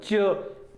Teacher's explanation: जब जैसे च हम बोलते हैं च, जिह्वा और तालु का संयोग हुआ, लेकिन उसके बाद एक रगड़ के साथ जो है इनका उच्चारण होता है, घर्षण के साथ उच्चारण होता है। च छ ज, एक घर्षण होता है। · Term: स्पर्श संघर्षी